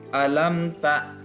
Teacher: mim sukunnya itu cukup satu ketukan ya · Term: idhar syafawi